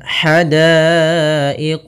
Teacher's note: ha kecil halus dari tengah tenggorokan kita